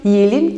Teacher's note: Yine burada da e ünlümüzün i ünlümüze dönüştüğünü görmek mümkün